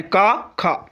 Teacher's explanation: का ख तो कंठ से बोली जाती है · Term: कंठ ध्वनियां